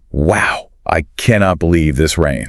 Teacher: Notice how the emphasis is on the word believe to show surprise?